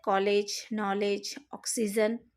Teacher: यह आ तथा ओ के बीच की ध्वनि है।